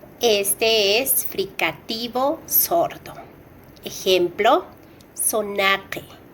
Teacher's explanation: Alveolar, S. Este es fricativo sordo.